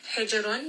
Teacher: Ra in this case is going to be heavy. · jim here is going to have qalqala. It is part of kutub jad.